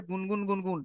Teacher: নাকের ভিতরে একালিফ পরিমাণ আওয়াজটাকে তুলতে হবে, তুলে গুনগুন গুনগুন। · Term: গুন্না